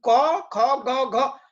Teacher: क ख ग घ ये सब का उच्चारण स्थल एक है, जिसको कंठ कंठ कहते हैं